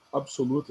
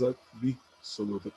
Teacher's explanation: Então, ao invés de absoluta, a pessoa diz absoluta, acrescenta um I naquele B, uma vogal de apoio